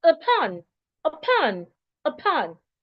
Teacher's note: I am stressing the second syllable, pon. While the first syllable, which is the U there, it should be reduced into a schwa. So that is why I should not say upon.